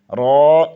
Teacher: زبان کی پشت اوپر والے دانتوں کے مسوڑوں سے لگے تو رو ادا ہوتا ہے